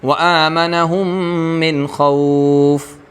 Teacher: مد لین عارض میں پہلے درجہ قصر کا آتا ہے، یعنی کہ بہتر اس میں قصر ہے، آپ قصر کیجئے، پھر اس کے بعد توسط کا درجہ آتا ہے، پھر اس کے بعد طول کا درجہ آتا ہے۔